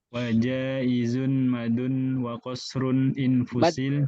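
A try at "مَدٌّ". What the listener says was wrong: Maddun. Ada syaddah maddun.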